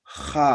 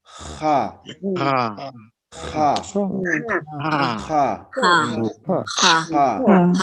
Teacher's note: esto ya es fricativa. Una J, pero raspando al momento de pronunciar